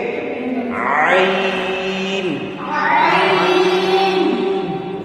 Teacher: عین کو واضح کر کے پڑھنا ہے گلے کے درمیان سے، گلے کے عین.